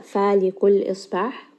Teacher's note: Lam has tawassut. Sad here is a permanently heavy letter as well. We are going to make sure that the alif remains light.